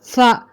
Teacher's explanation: சா சா எங்கேருந்து வருது அப்படின்னா, சா ரெண்டு பற்களுக்கு நடுவில் நாக்கை வெளி நிறுத்தி சான்ற சொல்லணும்